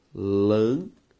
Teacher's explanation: Ao separar a palavra lâmpada, o nosso resultado é lâmpada. Sílaba tônica, lã. Por isso, antepenúltima e por isso, proparoxítona.